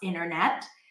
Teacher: The T after an N drops,